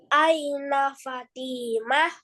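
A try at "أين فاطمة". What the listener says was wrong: Fa-nya panjang. Aina Fatimah.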